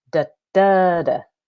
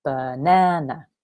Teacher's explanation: three syllables and the second one is stressed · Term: stress pattern